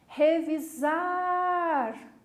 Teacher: Perceberam que eu puxei na última sílaba? portanto, é uma palavra oxítona.